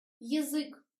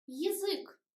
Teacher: We write ya, but we pronounce e. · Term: unstressed ya